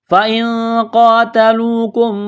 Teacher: فإن نون ساکن کے بعد قاف ہے، حروف اخفا ہے، یہاں غنہ کریں گے، آواز ناک میں چھپائیں گے. یہ بڑا قاف ہے، اس کو موٹا کرنا ہے، ایک الف کے برابر کھینچنا ہے.